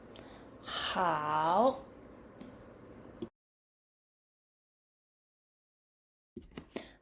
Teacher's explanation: Sound is formed by raising the back of the tongue close to the soft pallet creating friction as air flows through the narrow passage. While the sound H in English is a light throat sound made a relaxed tongue. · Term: Initial H